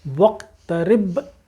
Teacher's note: ہونٹوں کو بند کر دی، ایک دم وقترب، یہ با کے اوپر قلقلہ ہوگا